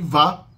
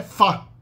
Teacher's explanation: Vá é uma fricativa labiodental sonora. A equivalente surda dela é fá. Fá e vá. A diferença é que vá, o som da letra V, de vinho, de vaso, tem um pouco de vibração das cordas vocais junto na produção.